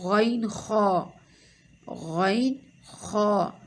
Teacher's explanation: غین خا، حلق کا وہ حصہ جو منہ کی طرف ہو